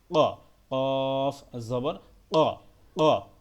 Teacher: কফটা গলার ভিতর থেকে একটু ধাক্কা দিয়ে উচ্চারণ করতে হবে